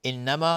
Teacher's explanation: قالوا مد جایز منفصل 4 تا 5 حرکت جوازن مد میخواد. انما نون مشدد 2 حرکت غنه میدیم